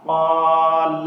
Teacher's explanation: اب اس میں قاف حروف مستعلیہ ہے، اس کو پر کر کے پڑھنا ہے